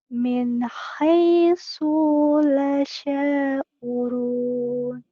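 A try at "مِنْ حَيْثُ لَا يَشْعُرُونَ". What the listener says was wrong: Salah. Asunya di situ pendek. Min haitsu la. Min haitsu la yash'urun. Di sini ada ya. Di sini ya. Ya digandeng sama shin. Yash.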